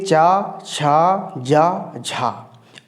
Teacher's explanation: लेकिन चूंकि ये ऐसे वर्ण हैं जिनके उच्चारण में स्पर्श तो होता है लेकिन थोड़ा संघर्ष ज़्यादा करना पड़ता है, इसलिए इनको कहा जाता है स्पर्श संघर्षी।